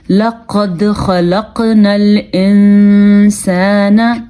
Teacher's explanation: یہاں پہ اخفا ہو رہا ہے کیونکہ نون ساکن ہے اور نون ساکن کے بعد سین ہے. حروف حلقی میں سے کوئی حرف نہیں ہے, یرملون میں سے کوئی حرف نہیں ہے اور با بھی نہیں ہے, تو سین کی وجہ سے یہاں پہ اخفا ہو رہا ہے.